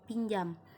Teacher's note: pada kata pinjam penyebutannya seperti ada huruf y di antara n dan J